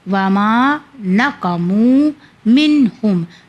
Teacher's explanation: یہاں پہ نون ساکن کے بعد حرف حلقی آ گیا یعنی ہاں، تو یہاں پہ اظہار کا قانون ہوگا۔ اظہار یعنی ظاہر کرنا، یعنی ہمیں گناہ نہیں کرنا ہے۔